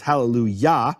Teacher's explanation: Yah is always the emphasized syllable, it's hallelujah.